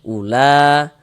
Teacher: ula la dibaca panjang. Ini namanya adalah mad wajib muttasil.